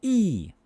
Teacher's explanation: e is high front tense if you make that sound e we lift our tongue toward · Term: long e sound